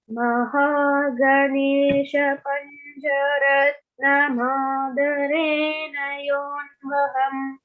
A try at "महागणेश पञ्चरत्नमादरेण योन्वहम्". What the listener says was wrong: महागणेश पञ्चरत्नम् आदरेण योन्वहम्. But when I heard you, I heard panja. It's pancha, cha, like chair. Okay, but great job, and the no was perfect.